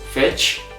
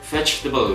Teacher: So we pronounce it vegetable. We omit the E sound in the middle.